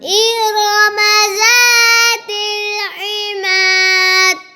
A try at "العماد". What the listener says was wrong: دال پر کلکلا نہیں کرتے عماد